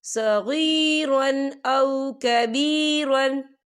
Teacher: ये देखिए, सगीरन, रा के पर तनवीन है और तनवीन के बाद जो है हमज़ा आ रहा है और हमज़ा जो है हुरूफ हल्की का वर्ड है, तो हम यहाँ इजहार करेंगे और हम इसे बिना गुन्ने के पढ़ेंगे।